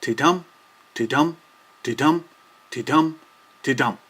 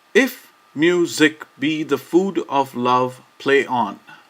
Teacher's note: Each ti and tum of a line is a syllable. Therefore, each line consists of 10 alternating unstressed and stressed syllables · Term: iambic pentameter